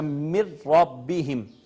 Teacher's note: نون کا جب را میں ادغام ہوا تو نون کا حرف نون تو نہیں رہا اب یہاں پہ، وہ تو را میں مدغم ہو گیا، لیکن نون کی آواز بھی باقی نہیں رہی، نون کی صفت بھی باقی نہیں رہی۔ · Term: ادغام تام